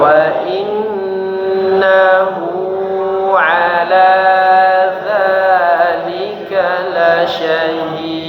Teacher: Wa innahu, wa in didengungkan lagi, kemudian hu-nya 2 harakat.